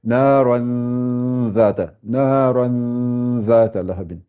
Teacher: Le zal, c'est l'extrémité des dents, des incisives, avec l'extrémité de la langue.